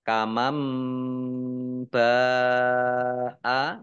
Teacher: nun sukun bertemu dengan huruf ba, bacaan iklab, dibaca membalik. Maksudnya nunnya dibaca mim, kamam ditandai ada mim kecil berdiri.